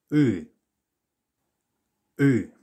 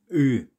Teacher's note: It's a rear sound, so it's coming from further back in your mouth. You have to move your tongue backwards.